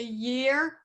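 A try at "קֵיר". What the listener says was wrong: You keep putting a ye in the middle of the word that doesn't belong. No. No, it's not year. Ke, ear.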